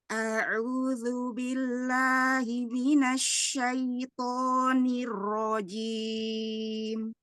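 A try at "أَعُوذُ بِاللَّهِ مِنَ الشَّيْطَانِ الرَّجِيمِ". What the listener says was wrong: Asyaiton, nggak mau to dibuka rahang tanpa dimajukan bibir. Ya, asyaitoni, atto, hmm, atto, bukan to. nggak ada gerakan bibir, bibir jangan dimajukan, kemudian rahang tetap dibuka. Atto, atto. Coba dicekungkan lidah tengah, kemudian lidah belakang naik, tenggorokan sempitkan, suara arah ke atas ya. A'udzu billahi minasyaitonir rajim. Ya, untuk huruf istilah, huruf tafkhim seperti ro juga ya.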